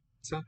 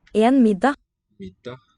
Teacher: Nice long double consonant sound there. Pizza. Taking up an extra beat.